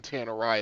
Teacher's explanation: the emphasis on Tannerai is on the second syllable